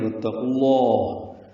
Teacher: واو کو تا سے ملانا ہے ، یہاں پہ ادغام شمسی ہے، یہ الف لام نہیں پڑھا · قاف کو لام اسم جلالہ سے ملانا ہے